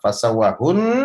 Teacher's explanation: pada kata fasawahun Nun tasydidnya dibaca syukur dan ditahan 2 harokat jadi Nun Pasti baik washal ataupun wakaf tetap harus ditahan 2 harokat